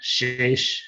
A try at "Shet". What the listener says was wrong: here you said shesh.